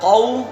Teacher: قاف کہاں سے ادا ہوتا ہے ہمارا؟ زبان کی جڑ اور تالو کا نرم حصہ